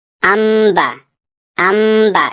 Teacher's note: چھوٹا سا میم یہاں پہ لکھا ہوگا، جو میم اشارہ کرتا ہے کہ یہ نون کو نہیں پڑھنا ہے، اس کی جگہ میم پڑھنا ہے، یعنی ان نہیں پڑھنا ہے، ام پڑھنا ہے۔ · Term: اقلاب